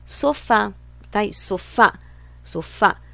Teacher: A última sílaba é a forte, termina em a, portanto, acento.